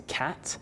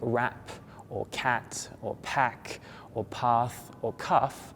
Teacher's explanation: it's a unvoiced sound you don't have any vibration when you say cat